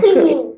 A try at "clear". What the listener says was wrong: No, that word is not clean. Clear.